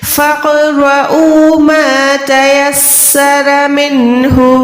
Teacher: क़ाफ़ साकिन पे कलकला करें, ये हुरूफ क़लक़ला में से आता है